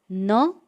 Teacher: न इस व्यंजन का उच्चारण स्थान है दंत नासिका के साथ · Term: अनुनासिक